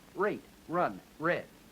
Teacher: the r of rate is the kind of r that begins a word fully voiced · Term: plus juncture